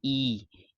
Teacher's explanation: क्या होता है संवृत स्वर? तो संवृत स्वर या ऊंचा स्वर ऐसी स्वर ध्वनि होती है जिसमें बिना व्यंजन ध्वनि बनाए जीवा को मुख में जितना संभव हो सके उतना ऊंचा और तालु के समीप रखा जाता है